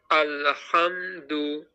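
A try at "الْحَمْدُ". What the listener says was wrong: হ্যাঁ মুখটা গোল করতে হবে, গোল করলে কি আপনার উচ্চারণটা, এই পেশের যে উচ্চারণটা সেটা সঠিক হয়ে যাবে। আবার বলেন আলহামদু, এই তো, হ্যাঁ মুখটা গোল করবেন, খেয়াল রাখবেন এটা পেশের উচ্চারণটা মুখটা গোল হয়ে যায়, হ্যাঁ। এই যে মুখ গোল, দু।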